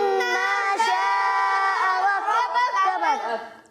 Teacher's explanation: اور ما جو ہے 1 الف کھینچیں گے